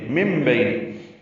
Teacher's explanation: نون ساکن کے بعد با آنے کی وجہ سے اقلاب یا ابدال ہو رہا ہے. نون کو میم سے بدل دیا جا رہا ہے.